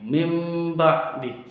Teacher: Iklab itu seperti nun sukun bertemu dengan mim, karena sifat dari ba itu diganti dengan mim.